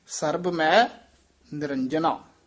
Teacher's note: ਮੈ ਦਾ ਉਚਾਰਨ ਨਾਸਕੀ ਨਹੀਂ ਕਰਨਾ